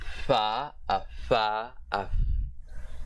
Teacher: the voiceless bilabial fricative consonant